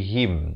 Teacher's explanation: Beza him dengan him. Ha bari kasrah bunyi hi. Bukannya bunyi he.